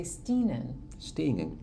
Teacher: there's that velar nasal again